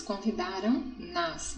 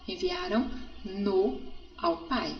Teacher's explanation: o verbo com som nasal no final